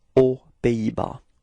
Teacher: so no link, no liaison between the words, so it's aux Pays-Bas.